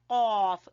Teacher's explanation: زبان کی جڑ سے قاف، اس کو موٹا قاف بھی کہتے ہیں